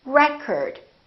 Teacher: if it's a noun it's pronounced as record the first syllable is stressed record this OH changes so it's not oh it's a record